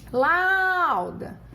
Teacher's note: o A é sempre vogal e o U é a minha semivogal. Então, eu tenho um ditongo decrescente.